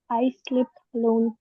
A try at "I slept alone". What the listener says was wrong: स्लीप नहीं, slept alone।